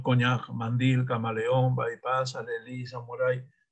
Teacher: Coñac, por ejemplo, se separa así en dos sílabas, coñac, mandil en dos sílabas, camaleón tiene cuatro sílabas, bypass tiene dos, alelí tiene tres, y samurái también tiene tres, ¿no? Pero fíjate que en todas estas palabras el acento está en la última sílaba. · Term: agudas